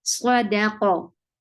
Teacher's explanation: Qaf will be heavy and will get sifa of qalqala. So both qualities should be there in qaf.